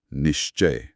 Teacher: तो इसका मतलब है कि च और छ बोलते समय क्योंकि हमारी जीभ मुंह की छत यानी तालू को छूती है तो उनके साथ तालव्य श आएगा।